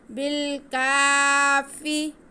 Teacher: آگے کاف پہ کھڑا زبر ہے، اسے ہم کھینچیں گے الف کے برابر. فا کے نیچے زیر ہے، اسے بالکل نہیں کھینچیں گے.